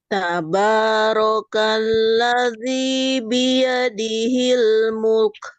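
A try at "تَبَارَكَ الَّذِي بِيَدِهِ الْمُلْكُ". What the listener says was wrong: Mulnya dulu, Bu. Agak turun sedikit.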